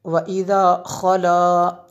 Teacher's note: اس خا میں خراش پیدا ہوگی